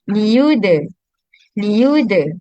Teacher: Sebab tujuan qalqalah tadi kita nak meringankan sifat tertahannya pada huruf dal. Sifat tertahannya suara pada huruf dal.